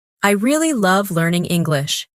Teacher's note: Emphasize really and love.